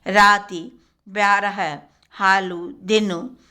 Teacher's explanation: ई, उ के जपित या फुसफुसाहट वाले रूप भी प्रयुक्त होते हैं।